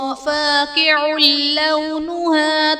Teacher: فاقع لونها میں عین پر دو پیش کی تنوین، تنوین کے بعد حروف یرملون میں سے لام ہے تو یہاں پر ادغام بلا غنہ کا قاعدہ ہوگا، یعنی تنوین میں ہم غنہ نہیں کریں گے